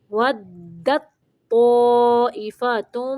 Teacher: دال کو تو کے ساتھ ملانا ہے